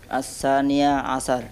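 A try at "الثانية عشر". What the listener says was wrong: Sahih.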